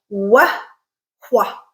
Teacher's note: they are considered bilabial because there's a lot of lip action going on, but there's also a lot of high tongue position in the back in that velar area, so they're also considered velar sounds.